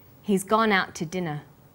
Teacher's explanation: We stress he's, gone, out, and dinner. The two is unstressed.